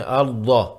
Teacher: ضاد کو ادا کرنا ہے، ارض، منہ بھر کر ادا ہوگا۔